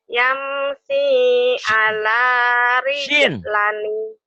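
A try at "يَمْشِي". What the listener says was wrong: Yamsi Shin. Yamsi. Yamshi. Yamshi.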